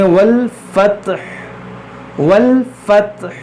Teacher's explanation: जब यहाँ पर हम रुकेंगे तो इस जो हा के ऊपर जो पेश है इसको हम साकिन कर देंगे